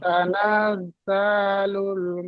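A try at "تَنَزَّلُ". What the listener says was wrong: তানাজ যা বলে টান দিচ্ছেন, টান হবে না। জালুল হবে না, তানাজ্জা।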